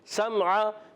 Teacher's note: میم کو ہلائیں گے نہیں، عین کو کلیئر کریں گے حلق کے درمیان والے حصے سے